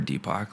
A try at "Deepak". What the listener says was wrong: It almost sounds like you're saying Tupac.